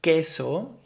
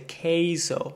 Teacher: we'll add just a little bit a y after the E